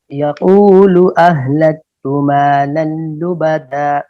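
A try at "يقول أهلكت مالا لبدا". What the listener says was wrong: हा को साफ कीजिए, जरा जोर से बोलिए।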